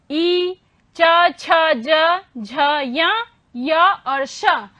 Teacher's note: ई, च, छ, ज, झ, य और श, इनका उच्चारण किससे हुआ? उच्चारण स्थान तालु से